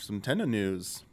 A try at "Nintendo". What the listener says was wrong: It really sounded like you were just saying Tendo. We got some Tendo news. Talking about some Tendo.